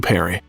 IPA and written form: ˈpɛri (Perry)